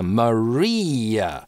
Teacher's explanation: здесь у нас долгий /iː/, дальше шва, связываем его через linking [j]